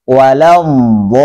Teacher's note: Itu belum cukup botnya. Botnya tidak boleh kurang daripada 6 karena dia lazim, harus.